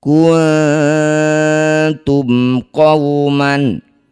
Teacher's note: Bunyi nun dengungkan dua harakat saat dengung lisan kita sudah bersiap bunyikan ta. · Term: ikhfa aqrab